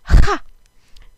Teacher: So this is a ch sound, but it is not a throat letter. The chaf is in the back of the palate, on the soft palate on the top of your mouth.